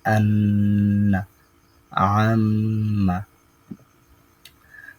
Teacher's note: নাকের বাঁশি হতে গুন্না উচ্চারিত হয়